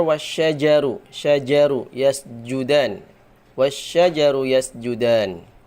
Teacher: Jimnya dibaca ya dengan keluar dari tengah lidah, bukan dari ujung lidah.